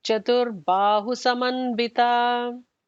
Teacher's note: The Chatur Ba would be a regular Ba, not a Bha